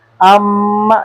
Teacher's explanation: हर्फ मीम को जब हम पढ़ते हैं इसकी थोड़ी सी आवाज़ नाक में भी जाती है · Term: गुन्ना